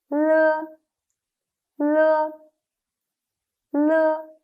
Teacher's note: The tongue tip makes a light contact with the upper alveolar ridge, but slightly more to the back than the position for N. The air stream is released from the side of the tongue. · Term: alveolar lateral